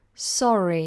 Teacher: now we have a vowel sound after so we make sure we pronounce those R's nice and clear